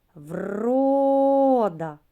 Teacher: правильно перший склад наголошений